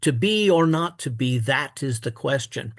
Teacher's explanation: the word that does receive a strong stress